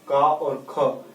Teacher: इन वर्णों का जो स्थान है वह कंठ है, क्योंकि यही वास्तव में कंठ रूप से बोले जाते हैं। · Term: कंठस्थ ध्वनियां